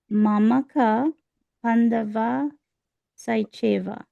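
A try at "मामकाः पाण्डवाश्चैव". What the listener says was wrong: Pandavas Chaiva. There's an S to Pandavas. Yeah.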